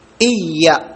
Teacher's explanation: യാന്റെ മഹ്റജ് നാവിന്റെ മധ്യവും അണ്ണാക്കിന്റെ മധ്യവും ആണെന്ന്